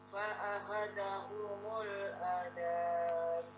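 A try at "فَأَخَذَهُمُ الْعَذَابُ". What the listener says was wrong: Fa'akhadha. Dzanya kurang bagus di bagian sini, tidak seperti yang sebelum-sebelumnya. Dzal itu dengan mengeluarkan sedikit lidah ya, satu makhraj dengan sa. Cara mengucapkannya sama, bedanya sa ada angin, dzal tanpa angin.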